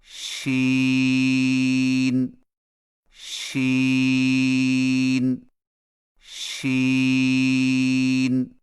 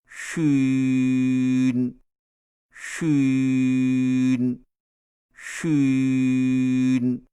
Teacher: شین کی ادائیگی میں زبان کے درمیان کو تالو کی طرف بلند کرتے ہوئے باریک اور پھیلتی ہوئی آواز میں پڑھیں